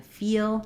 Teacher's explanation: more flat fill my tongue is a little higher and then feel my tongue is the highest and the most forward and the most tense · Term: E vowel